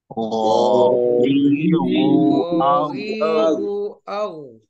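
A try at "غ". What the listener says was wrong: Gha. Nah, ditebalkan seperti itu ya. Ghazihu au. Di sini masih ada sebenarnya yang memajukan bibir. Jadi uwa tidak. Kita tidak memajukan bibir di sini ketika fathah. biasa saja dibuka.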